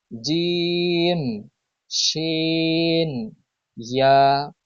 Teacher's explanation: প্রথমে 6 নাম্বার মাখরাজ, জিহ্বার মধ্যখান তার বরাবর উপরে তালুর সঙ্গে লাগিয়ে উচ্চারিত হয়